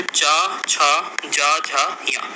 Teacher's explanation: जीभ का मध्य भाग मतलब बीच वाला भाग हमारे तालु को स्पर्श करता है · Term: तालुप व्यंजन